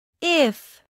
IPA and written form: ɪf (If)